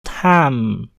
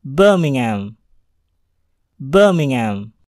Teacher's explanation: huruf H dalam hal ini tidaklah dibunyikan, melainkan dihilangkan